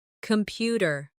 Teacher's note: The stress is on the second syllable. Compu tear. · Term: word stress